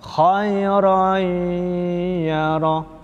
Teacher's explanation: huruf ya-nya hilang, ya, tetapi sifatnya masih ada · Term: idgham naqis